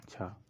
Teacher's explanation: तालव्य महाप्राण अघोष व्यंजन का उदाहरण है